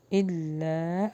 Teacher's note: الف مد اللہ ہوگا اور تھوڑا پریس ہوگا کیونکہ تشدید ہے